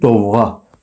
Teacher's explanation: Demirik ki, dovğa, deyirik dovğa. Yəni vurğunu sonda deyirik · O qalın saitdir, dodaqlanandır, açıq saitdir. · Cingiltili samit qeyd olunub ki, hamısı cingiltilidir. D cingiltilidir, V cingiltilidir və həmçinin Q da cingiltili samitdir.